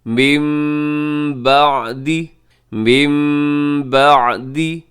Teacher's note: مم بعدی، مم بعدی، یہاں نون ساکن کے بعد با ہے تو یہاں پر بھی کیا ہوگا؟ اقلاب ہوگا، نون کو میم سے بدل کے پڑھیں گے